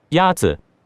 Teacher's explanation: The first tone is a high, level tone.